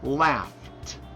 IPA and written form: læft (laughed)